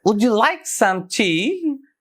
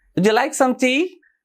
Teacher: So here the words are like and tea are stressed.